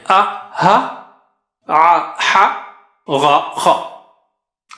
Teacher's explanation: حمزہ ہا جو ہے حلق کے نیچے سے اور بیچ سے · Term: حروف حلقی